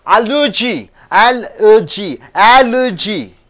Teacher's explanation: You have to stress the first syllable, al.